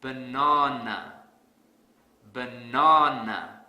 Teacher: I will stress the second syllable really hard